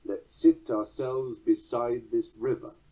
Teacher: Well, this docking, this catalexis, results in an iambic tetrameter, 4 accents to a line with a weak ending, that extra syllable